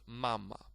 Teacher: It appears that this first syllable might be a little bit longer, but it actually is not. It's just that when you put a little bit stress to the syllables, they sometimes appear that they sound a little bit longer, but they do not. · Okay, the second pronunciation, ma was without stress, but the stress falls on the first syllable here, so it's mama